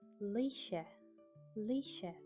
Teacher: when an S is next to an I or an E, we call it an S-Kyle or a slender S, and that's pronounced like sh